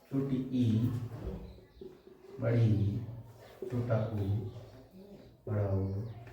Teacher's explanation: मुख लगभग बंद रहता है, लगभग बंद रहता है